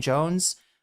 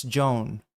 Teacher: It's Joan because nobody can pronounce the S after the own